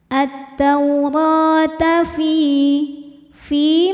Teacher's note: karena ada Ya Sukun didahului harakat kasrah maka Fi panjang dua harakat